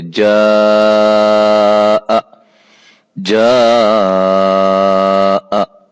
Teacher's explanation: اس حمزہ کی وجہ سے الف مدہ کی مقدار جو کہ ایک الف تھی اصلی اور ذاتی، اس کو ہم بڑھا کر 3 سے 4 الف جو ہے وہ ہم کریں گے. 4 الف کے برابر ہم اس کو پڑھیں گے. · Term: مد واجب